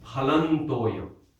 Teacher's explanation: it's a sympathetic nasal, which means it takes the sound of the nasal that is appropriate to the next letter.